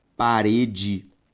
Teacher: a sílaba tônica de parede re